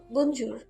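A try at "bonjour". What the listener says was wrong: না আপু, একটু নরম করে বলুন, শুনুন, বনজোর।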